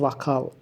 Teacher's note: vakal olur yəni o a-ya dəyişir